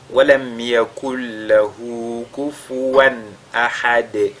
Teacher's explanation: Et ahad, on fait donc qalqala sur la lettre dal. · Et à chaque fois qu'on fait qalqala sur la lettre dal, on a indiqué qu'il y a des erreurs qu'il faudra éviter. Notamment, il faudra éviter de lire ce dal là comme un e. On entend kufuwan ahad de.